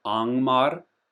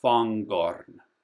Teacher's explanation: So Angmar is just like in English an ing, like running, whereas here you pronounce the G, Fangorn.